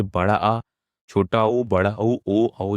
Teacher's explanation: जीभ के जो पश्च भाग से बोले जाते हैं उसे हम लोग बोलते हैं पश्च स्वर